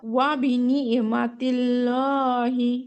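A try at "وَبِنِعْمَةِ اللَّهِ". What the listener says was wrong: আপু, এখানে আইনের উচ্চারণটা একটু বলা যাবে, নিয়া, নুন আইন যে নিয়া, ওয়াবিনিয়ামাতিল্লাহি।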